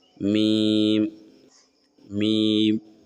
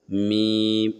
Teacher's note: میم بولتے سمے آٹومیٹک آپ کا ہونٹ شروع میں بند رہے گا، میم، پھر آخر میں بھی ہونٹ آپ کے بند ہو جائیں گے